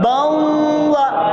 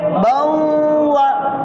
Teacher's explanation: دو زبر کی تنوین کا ادغام واو میں ہوا، یعنی کہ دو زبر کی تنوین کی آواز واو میں مل گئی۔